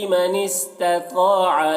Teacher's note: تو کو موٹا کر کے پڑھیں گے اور الف مدہ ہے